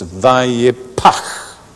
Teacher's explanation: The P sound is a plosive, and the chet sound is an ongoing breath.